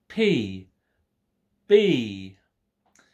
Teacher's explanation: an important part in producing print precise consonant sound for example the p and the b sounds are made when pressure is built up in the mouth and is suddenly released by the lips